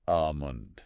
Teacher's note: So in American English, we generally say almond. Yeah. Drop that L completely. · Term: silent L